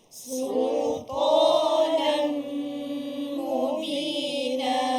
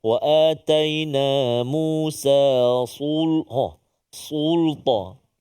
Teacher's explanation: Jadi sultanan mubina ni kita nak jaga sin tu supaya tak terkesan tebal ta